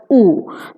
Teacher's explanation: in case of u, the lips are rounded, so u is a rounded vowel